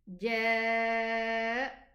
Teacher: The Hamza is almost not existing, okay? So the nabr makes the Hamza heard.